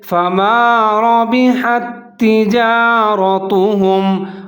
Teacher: یہاں را کے اوپر زبر ہے، اس کو موٹا پڑھیں گے